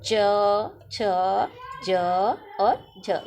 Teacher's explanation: स्पर्श संघर्षी इनको बोलने में जोर लग रहा है